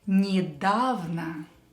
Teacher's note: The second letter, the ye letter here, is pronounced as e. Why? Because it's not stressed. When ye is not stressed, we will pronounce it as e.